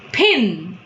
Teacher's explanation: But if I tell pin, it is, I am telling with aspiration, and hence it's an aspirated P.